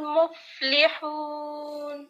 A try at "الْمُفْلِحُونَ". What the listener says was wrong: اس میں لام کی زیر کو سرکل کر لیں. اس کو مفلی پڑھنا ہے, لی. مفلحون نہیں پڑھیں گے, ٹھیک ہے.